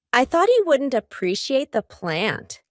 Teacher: For each of those T's, my tongue is stopped at the top of my mouth. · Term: stopped T